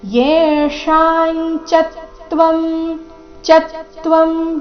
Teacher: ಅನುಸ್ವಾರ ಉಚ್ಚಾರಣೆ ನೋಡಿ ಅದರದ್ದು ಚ ವರ್ಗದ ಅನುನಾಸಿಕದ ರೀತಿ ಬರಬೇಕು ಮುಂದೆ ಚ ಬಂದ ಕಾರಣ ಯೇಶಾಂ ಚತ್ವಂ ಚತ್ವಂ ಚ ಮೇಲೆ ಆಘಾತ ಮುಂದೆ ತ್ವ ಬಂದಿದೆ ಅದಕ್ಕಾಗಿ ಚತ್ವಂ